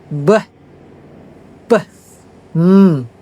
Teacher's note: For example, when you say beh ya, when you say beh ya, the e is blocked by two l udara itu dihambat oleh dua dua bibir · Udara itu dihambat oleh dua bibir. B. Itu dihambat. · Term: bilabial